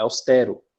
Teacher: O som continua sendo forte no E, mas a pronúncia é do som aberto